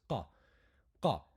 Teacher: It should be like a little explosion of air, a small explosion, not a huge one. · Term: qaf